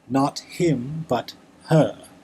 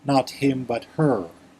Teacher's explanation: The RP would, of course, make no R sound.